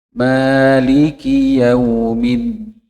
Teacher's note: Huruf dal itu tidak terlalu banyak udara yang keluar.